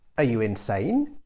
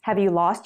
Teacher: to criticize someone use a rising tone